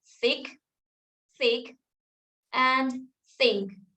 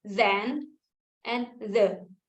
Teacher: The dental sound is produced by the tip of the tongue or blade and upper front teeth. Dental sounds occur when we block or constrict airflow by placing tip of the tongue on or near the inner surface of the upper teeth.